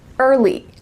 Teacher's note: I often hear English learners say, Early, err, uh, lee, but that uh in the middle isn't natural